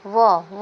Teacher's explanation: व का उच्चारण स्थान है बच्चों दंतोष्ठम, अर्थात दंत और ओष्ठ दोनों के आधार पे व का उच्चारण करते हैं